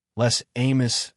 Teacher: In les amis, you hear a z sound linking the words.